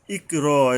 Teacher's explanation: ইকরা, এই যে বড় কফ, এখানে যে হলকের গোড়ার থেকে মোটা করে শক্তভাবে আদায় করতে হবে